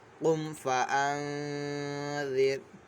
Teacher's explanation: ہوگا، اور نون ساکن میں جو ہے غنہ کریں گے، یعنی نون ساکن کی آواز ناک میں لے کے جائیں گے اور ایک الف دو حرکات کے برابر اس کو کھینچ کر پڑھیں گے · را کو باریک پڑھنا ہے، کیونکہ را ساکن سے پہلے جو ہے زیر اصلی ہے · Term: اخفا